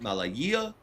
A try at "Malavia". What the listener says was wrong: Malavia. That's a V, not a Y.